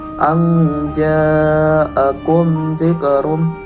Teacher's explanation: bacaan mad wajib mutasil dikarenakan terdapat mad tabi'i bertemu dengan hamzah dalam satu kalimat. Cara membacanya yaitu panjang 6 harokat.